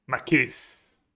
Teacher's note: the tone goes on the first syllable